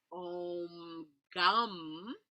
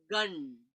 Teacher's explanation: So it becomes like a nasal sound, like the sound croissant. All the sound is it's in the nasal cavity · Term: Anuswara pronunciation